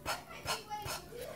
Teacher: you don't want to say pa because then you're adding a vowel to it. When I say pa, you hear a U.